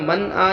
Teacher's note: نون ساکن بعد حروف حلقی 6 حرفوں میں سے حمزہ آیا ظاہر کر کے بغیر غنہ جلد ادا کریں گے